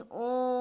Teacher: लेकिन ओम जब इस प्रकार का शब्द हम उच्चारण करते हैं तो बीच में जो खिंचाव हो रहा है ओ और माँ के बीच में, वही आपका प्लुत स्वर है।